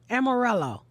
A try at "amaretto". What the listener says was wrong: No, there's no L. Amaretto.